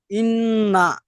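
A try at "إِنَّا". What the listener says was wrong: শেষে টান হচ্ছে না, ইন না।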